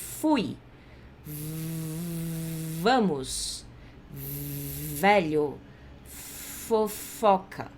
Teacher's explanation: o som do F e do V a gente faz usando o lábio de baixo e dente de cima para impedir a passagem de ar e fazer o barulho, certo?